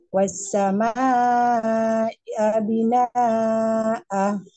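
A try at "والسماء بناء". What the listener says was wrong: Naknya kurang panjang, Bu. Naknya kurang panjang.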